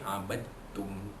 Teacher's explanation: Abadtum, dal mati jumpa dengan ta, idgham mutaqaribain, dal mati idgham mutaqaribain, mutajanisain, maafkan saya, idgham mutajanisain. Apabila dal mati itu bertemu dengan huruf ta itu, maka dal itu dia terus masuk. Kerana huruf dal dan huruf ta datang dari kawasan makhraj yang sama.